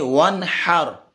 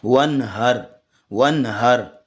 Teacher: یہ وہ ہا ہوتا ہے جو آنکھوں والی ہا ہوتی ہے اور سینے سے ادا ہوتی ہے